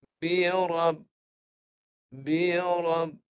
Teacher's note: dimatikan dengan ditahan bunyi huruf ba pada kedua bibir Ah memang suaranya tertahan Ah ini baru sifat hurufnya tertahan ya